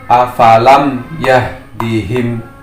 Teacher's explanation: Jelas dan terang di sini artinya tidak mendengung, sama halnya dengan ketika kita mengeja suku kata yang berakhiran dengan huruf M pada kata sampan, tampan. Semua huruf M harus dibaca dengan jelas. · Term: idhar syafawi